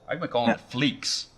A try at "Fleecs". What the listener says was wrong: A lot of people do. The C is silent.